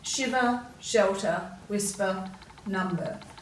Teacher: if we pronounce these words correctly we would hear that er sound at the end but we tend to give it a schwa sound a grunt sound